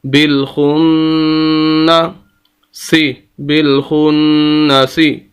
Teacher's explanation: نون مشدد ہے تو نون کی آواز ناک کے اندر جائے گی